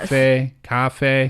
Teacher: And it's the same tone for the first syllable and the second syllable.